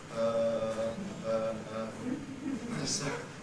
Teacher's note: in English our rest position is around uh when we hesitate we go uh